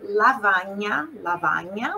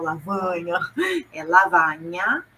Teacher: o A aberto, olha só, o italiano não costuma ter esse som nasal